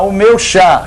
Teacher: o meu chá é forte, meu e o são átonos